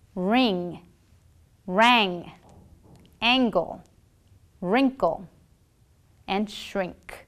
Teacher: and fig to produce the mean sound open your mouth slightly move the body of your tongue towards the back of the mouth you will have air flowing through your nasal cavity and your vocal folds will vibrate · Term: ng sound